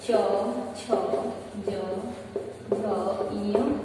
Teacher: च का उच्चारण तालु पे पड़ता है